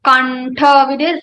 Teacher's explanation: Anuswara sound will be converted into ta varga's fifth letter, that is rang.